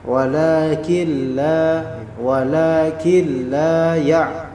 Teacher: Syuf sini, as-sufaha walakin la di sini kemudian dia mad tabi'i 2 harakat ki. Nah, nunnya ini tidak dibaca, melainkan langsung menuju ke lam. Jadi nun mati ketemu dengan lam, maka ini nanti akan dinamakan sebagai idgham.